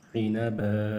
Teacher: عین زیر عی نون زبر ن عن با دو زبر بن عنبا. آخر میں دو زبر ہے تو حالت وقف میں الف ہوگا